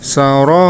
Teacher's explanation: huruf ra-nya dibaca panjang, boleh 4 harokat, boleh 5 harokat ya